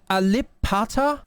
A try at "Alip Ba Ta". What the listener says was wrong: Now, it's not Pata. It's Bata. You've got to learn your ABCs there, and your pronunciations. Alip Bata.